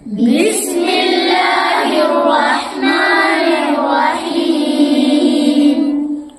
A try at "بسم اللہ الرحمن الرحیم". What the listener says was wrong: بڑا ہا نہیں نکالے تم. رحمن الرحیم.